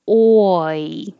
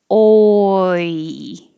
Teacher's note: Lips go front to back, oi. Your jaw goes from low to high, oi.